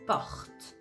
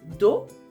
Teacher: because the O is not the last sound of the syllable, we're going to open it to welcome the other sounds. That's the reason why you're going to say porte.